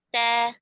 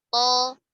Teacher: Karena kalau ta dibaca tebal menjadi to. To kalau dibaca tipis menjadi ta.